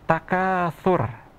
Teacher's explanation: Huruf tha itu makhrajnya ada di ujung lidah bertemu dengan ujung gigi bagian atas